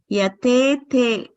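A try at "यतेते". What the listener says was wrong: No, there is Mahaprana. It has to be controlled. Yatete. A little more softer. Yatete. Yatete. Yatete.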